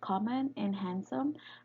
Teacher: words such as common and handsome carry the stress on the penultimate position because the syllable in the ultimate position becomes light syllable after